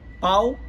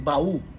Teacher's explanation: Duas maneiras de falar, um é ditongo, a outra é hiato.